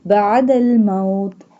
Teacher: Ain pronounced from the middle part of throat.